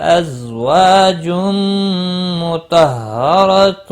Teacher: وا الف مدہ ہے، ایک الف کے برابر کھینچ کر پڑھیں گے. تنوین کے بعد حروف یرملون کا میم آئے، ادغام با گنہ ہوگا